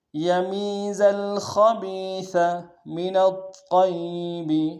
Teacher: طا کو موٹا ادا کریں گے، طا کے اوپر تشدید ہے، زور دیں گے